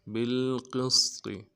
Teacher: وزن بالقسط با کو لام کے ساتھ ملانا ہے، قاف کو سین کے ساتھ ملانا ہے، سین سیٹی والا حرف ہے، قاف کو موٹا کریں گے